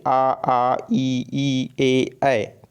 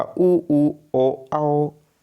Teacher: अवृत्तमुखी में जो है होठ का आकार जो है गोलाकार नहीं बनेगा, जैसे आ ई ए।